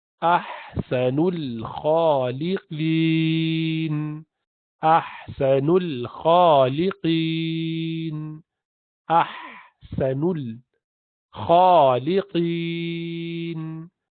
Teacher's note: لقین، اور لمبا اس لیے کیا کہ آخر سے پہلے والا حرف حروف مد میں سے ہے، یعنی یا ساکنہ ہے اور اس سے پہلے والے حرف پر زیر ہے تو مد دیا ہے، یا مد دیا، اس لیے اس پر آپ مد العارض بالسکون کر رہے ہیں، یعنی لمبا کر رہے ہیں جب روکتے ہیں یہاں پر